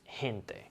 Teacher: in the word gente which means people it sounds like an h